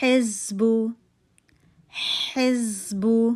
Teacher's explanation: اس کو حلق کے درمیانی حصے سے آپ نے نکالنا ہے